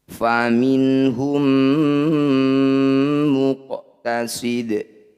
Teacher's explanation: Bunyi qaf pantulkan tapi jangan berlebihan, pantulannya dialirkan saja. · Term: qalqalah sugro